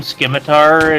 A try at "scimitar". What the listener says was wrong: They do not pronounce the C harshly. It's just scimitar. It's not scimitar.